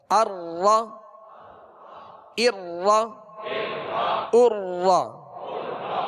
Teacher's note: اس میں ہلکی سی کپکپاہٹ ہوگی، ہلکا سا تکرار ہوگا، یعنی تکرار کی مشابہت اختیار کریں گے